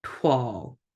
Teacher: it almost sounds like there's like no glottal stop there.